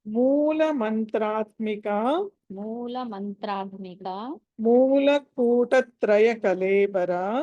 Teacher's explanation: దీంట్లో ఎక్కడ కూడా ఆ మహా ప్రాణాలు ఏమీ లేవు అన్ని అల్ప ప్రాణాలు